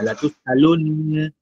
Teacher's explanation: usimamaji wa nun na mim zikiwa na shadda, usimamaji wake ghunna inabaki lakini fatha inaondoka